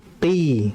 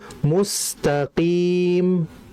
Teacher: Huruf qaf, dia hanya sifatnya isti'la, tidak masuk itbaq. Maka kita cukup baca dengan qi, seperti itu.